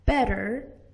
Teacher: The flap or the alveolar tap in American English is used similarly to the D sound. It's pronounced, however, very fast. It's used in rapid speech.